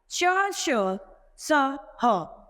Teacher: वे व्यंजन जिनके उच्चारण के समय हमारे मुख से गर्म ध्वनि निकलती है, वे ऊष्म व्यंजन कहलाते हैं। जिन व्यंजनों के उच्चारण में वायु मुख के विभिन्न भागों से टकराकर गर्मी उत्पन्न करती है, ऊष्म व्यंजन कहलाते हैं।